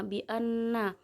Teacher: Ayat kelima bi anna gunnah musaddah karena ada huruf nun yang bertasydid, cara membacanya masuk dengan mendengung